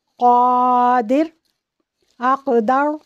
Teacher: قاف، یہ موٹا پڑھا جاتا ہے اور سختی سے پڑھا جاتا ہے